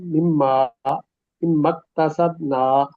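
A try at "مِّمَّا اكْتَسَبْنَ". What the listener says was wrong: نہیں لمبا نہ کریں نون کو، بلکہ وقف کر لیں تو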